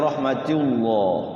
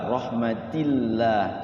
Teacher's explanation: kalau rahmatullah nantinya tebal. Rahmatillah tipis.